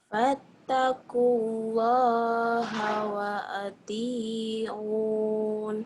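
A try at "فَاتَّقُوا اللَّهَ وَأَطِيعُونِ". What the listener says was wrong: Bagus tapi tonya kurang mantap nih, dia dengerin ya. Fattaqullaha wa ati'un. Jangan kan wa ati'un.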